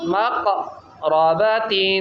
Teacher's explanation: زور سے قاف کو قلقلہ کریں